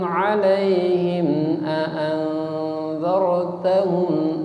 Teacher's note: Mim matinya ya, tidak boleh ada dengung. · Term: Izhar